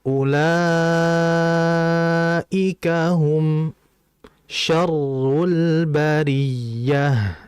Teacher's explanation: La dibaca sebanyak 4 sampai 5 harakat, ya. · Di mana mim harus dibaca sebagai izhar, dengan jelas, dan sheen juga harus dibaca dengan jelas. Jadi, memang dengungannya tidak terlalu kuat di sana, tetapi memiliki karakteristik yang disebut tawasut. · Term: Mad wajib